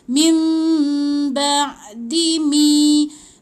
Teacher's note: Jadi mim mi mati dengan mim. Mim tahan 2 harakat dengung.